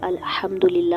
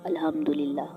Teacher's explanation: دوسرا جو ہا ہے وہ حلق کے درمیان والے حصے سے ادا ہو رہا ہے، اور ایک ہا حلق کے نیچے والے حصے سے ادا ہو رہا ہے۔